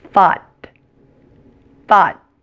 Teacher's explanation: As with most T's at the end of words, the T is held. Basically, your tongue moves to the position to pronounce the T, but it does not release the air · You'll notice that T is very soft, but my tongue does move to the position to pronounce it. I don't pronounce it t like I would in the words table or teacher.